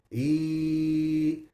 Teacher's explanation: there's a slight elevation on the tongue in the middle of the tongue to say e. So the tongue is not in a complete resting state, but it's slightly raised in the middle for the ya.